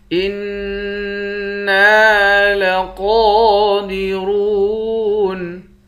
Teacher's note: حمزے کو نون مشدد کے ساتھ ملا کر نون پر غنہ کریں گے۔ نون کے بعد الف ہے، الف حروف مدہ ہے، اس کو 1 الف کی مقدار کھینچ کر پڑھیں گے۔